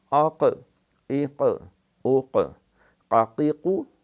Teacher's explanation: زبان کی جڑ اوپر کے تالو سے یوں جا کے ٹکراتی ہے، وہ ایک گوشت کا لوتھڑا جو تھوڑا سا ہمارے حلق میں اس کو کوا کہتے ہیں لٹک رہا ہے، وہ زبان کی جڑ کڑک جا کے اس کے ساتھ لگتی ہے زور سے، تو وہاں سے پھر یہ قاف ادا ہوتا ہے۔